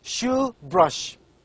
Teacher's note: this word begins and ends with the voiceless palatal sound